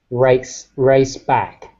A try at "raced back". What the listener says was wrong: so you just just be careful about dropping the endings of the word